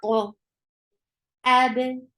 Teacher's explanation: Hamza is a sharp sound. The makhraj cuts off the sound right away. So this is a shidda letter.